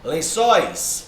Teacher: Ó, é uma oxítona. A sílaba tônica é a última. · Não é o len, que é a sílaba mais forte. É o sóis. Beleza? Ó, o ditongo aberto, ois, recebe acento.